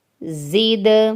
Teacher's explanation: دال حروف قلقلہ ہے، ہلا کر پڑھیں گے